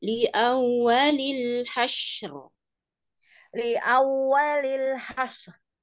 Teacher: Huruf syin ada sifat rukhawah, alirkan dulu.